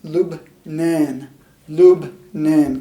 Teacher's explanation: We've got an L, short U, B, followed by N, long A, N.